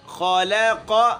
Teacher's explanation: خا موٹا لام باریک، پھر قاف موٹا. خالق پھر اگلا کاف باریک.